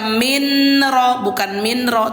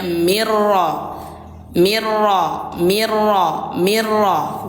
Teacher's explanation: lebur itu bacanya bukan min ya, tapi menjadi satukan antara nun dengan ro. Jadi bacanya mirro.